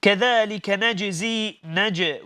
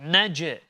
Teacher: نج, we bounce on the letter jim. Okay, this is known as qalqala.